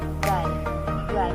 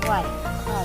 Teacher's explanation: The A and I are given equal prominence to produce this sound. Repeat the name of the two English letters of the alphabet, I and E, rapidly, one immediately after the the other.